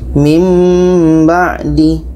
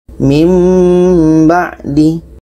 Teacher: Bunyi nun itu kita pindahkan kepada bunyi mim. Dan ada di sini dengung.